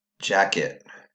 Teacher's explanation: say the full word jacket which syllable was quieter that's right the second syllable was quieter meaning that the e did not say it said it instead jacket okay so the may succeed sort